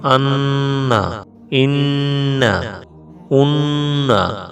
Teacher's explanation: 17 নম্বর মাখরাজ নাকের বাঁশি হইতে গুন্না উচ্চারিত হয়